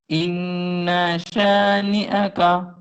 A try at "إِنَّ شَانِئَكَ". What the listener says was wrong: شاباش، پھر پڑھو.